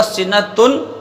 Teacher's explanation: یہ نون کو پورا مکمل جب ہم نے ادا کر دیا تو یہ اظہار کہلاتا ہے. تو یہاں پہ اظہار نہیں بلکہ ادغام کرنا ہے.